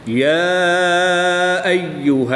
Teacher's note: کھڑی زبر کے بعد حمزہ دوسرے کلمے میں ہے تو یہاں پر مد منفصل ہوگی، 2 سے 3 الف تک کھینچ کر پڑھیں گے۔